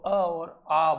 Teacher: अ और आ का जो उच्चारण होता है कंठ से आता है साथियों